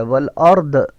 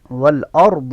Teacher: ضاد کی مشابہت ضا کے ساتھ ہے نہ کہ دال کے ساتھ ہے